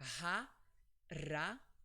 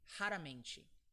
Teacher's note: at the beginning of the word, it's always pronounced like H, like an H. So it's ha, and the second R is another case of the R sound.